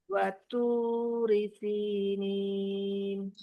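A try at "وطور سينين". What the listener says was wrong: Toknya tebal lagi.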